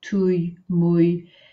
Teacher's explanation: So make sure you keep saying the ou, y together, ouille, and then you can add any consonant sound to that.